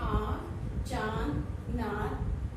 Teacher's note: इसका चिन्ह शिरोरेखा के ऊपर बिंदु के रूप में लगाया जाता है। अनुनासिक इसके उच्चारण के समय हवा नाक तथा मुंह दोनों से दबाव के साथ बाहर निकलती है